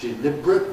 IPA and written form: dɪˈlɪbr̩ət (deliberate)